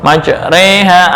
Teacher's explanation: Imalah ra, majra dibaca majre, yang asalnya fathah ya dibaca antara fathah dengan kasrah